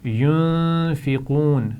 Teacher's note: نون ساکن کے بعد حروف حلقی بھی نہیں ہے، لام اور را بھی نہیں ہے تو یہاں پر غنہ کیا جائے گا اور قاف کو موٹا پڑھیں گے.